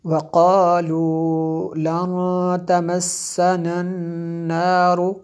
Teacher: یکسبون وقالوا لن تمسنا النار، یہ دیکھیں نون ساکن کے بعد تا حروف اخفا میں سے ہے، یہاں پہ اخفا ہوتا ہے جی، آگے نون ساکن کے بعد دوسری نون جو ہے مشدد ہے یہاں پہ اس لیے غنہ کیا۔